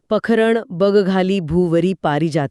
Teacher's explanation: सुरुवातीची सलग 6 अक्षरे ऱ्हस्व असतात, ज्यांचा उच्चार अतिशय हलका आणि जलद होतो.